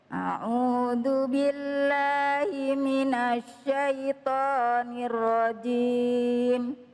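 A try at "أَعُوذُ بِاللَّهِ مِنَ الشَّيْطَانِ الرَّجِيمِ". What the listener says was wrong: Ya, ditekan dikit, Bu. Syaitanir nir. Ada tekanan di situ. A'udzu billahi minasyaitonir rajim.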